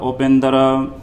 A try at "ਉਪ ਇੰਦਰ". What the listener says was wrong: ਕੋਟ ਇੰਦਰ ਉਪ ਇੰਦਰ ਉਪ ਇੰਦਰ ਇਹ ਊੜਾ ਲੱਗਾ। ਉਪ ਇੰਦਰ ਹੈ ਨਾ ਉਪਿੰਦਰ ਨਹੀਂ